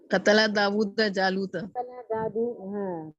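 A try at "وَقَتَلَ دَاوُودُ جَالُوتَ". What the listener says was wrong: قتل داؤد, اس کو تھوڑا کھینچ کے آپ پڑھیں گے, داؤد جالوتا.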